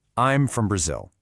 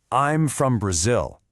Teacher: Notice how I'm and from provide the underlying beat and Brazil gets the heavy emphasis. Go ahead and over-enunciate the rhythm here.